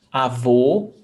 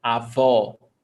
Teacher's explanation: O, closed vowel sound, avô, that's masculine, grandfather. A avó, open vowel sound, o, avó.